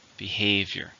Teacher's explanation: how many syllables are in behavior three stress on the second syllable